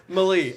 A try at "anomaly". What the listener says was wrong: it's not anomaly. anomaly. it's not anon. It's anom. anom ali. Anom ali.